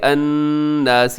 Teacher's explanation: یہاں نون مشدد ہے، یہاں غنہ کیجیے گا